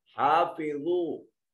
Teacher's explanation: زوا کو موٹا کر کے پڑھا جائے گا، جس کو ہم اردو میں زوئیں کہتے ہیں، توئیں زوئیں، تو وہ زوا پڑھی جاتی ہے اردو عربی میں، اور اس کو موٹا کر کے پڑھیں گے، پر کر کے.